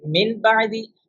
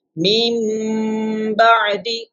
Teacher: So what we have to do in Iqlab, actually we will change the noon sakin or tanween sound into meem, and then we will have to do gunna